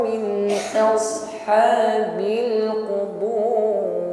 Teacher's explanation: Jadi sad di sini walaupun sukun ya masih tampak ketebalannya ya. Jadi sedikit bedakan antara sad sukun dengan mengucapkan sin sukun.